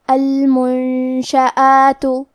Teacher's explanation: کلمت المنشآت میں نون ساکن ہے، پھر حرف الشین ہے، شین حروف الاخفاء میں سے ہے اور اخفاء کا معنی ہے چھپا دینا، تو ہم نون ساکن کو چھپاتے ہوئے اور غنہ کے ساتھ یہ حکم کو ادا کریں گے